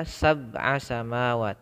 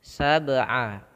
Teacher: Nah, sehingga kita harus memantulkannya, jangan dibaca sab'a samawat, tapi harus sedikit pantulan seakan-akan ada tambahan huruf e gitu ya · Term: qalqalah